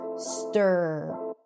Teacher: an R vowel where the vowel right before the R is practically neutral. So you don't really hear a vowel sound and the R takes over the sound just like in the word stir. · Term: stir sound